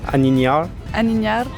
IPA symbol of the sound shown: ɲ